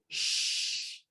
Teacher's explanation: That's produced with your tongue approximating the post-alveolar region, but it's not touching. So there's turbulent airstream. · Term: fricative